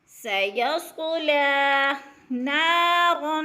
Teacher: نا پہ الف مدہ ہے، اس کو بھی کھینچ کر پڑھیں گے